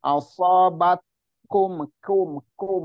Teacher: Hati-hati di asobatkum ke kakak itu hati-hati agak cenderung lari ke qaf dia ketika di dhammah. Kalau ka itu tipis ya, terus dia punya hames juga.